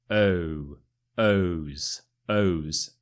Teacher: you need the circle for the o sound and it's quite stretched out